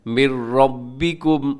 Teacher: نون ساکن کے بعد را ہے، تو کیسے پڑھیں گے؟ اس میں نون ساکن بالکل ختم ہو جاتے ہیں، یعنی اس کی آواز بالکل ختم ہو جائے گی. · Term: ادغام بلا غنہ